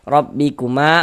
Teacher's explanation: huruf ra dibaca tafkhim, dibaca tebal, sehingga dengan cara menaikkan pangkal lidah kita ketika kita mengucapkannya